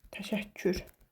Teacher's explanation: Təşəkkür sözündə ikinci K hərfi C-yə dəyişir.